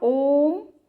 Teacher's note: खींच के कहना पड़ता है ना, ओम। तो ओम जो है वह प्लुत स्वर के अंतर्गत आता है।